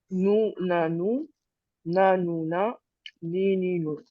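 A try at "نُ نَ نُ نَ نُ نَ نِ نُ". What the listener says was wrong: c'est ça, c'est vrai.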